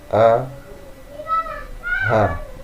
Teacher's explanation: Jadi hamzah ha itu di pangkal tenggorokan, itulah batas bawah